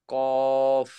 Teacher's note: জিহ্বার গোড়া তার বরাবর উপরের তালুর লাগাইয়া দু নুক্তাওয়ালা কফ